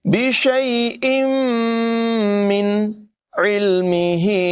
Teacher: تنوین کے بعد میم ہے ادغام ہوگا غنہ کریں گے ملا کر پڑھیں گے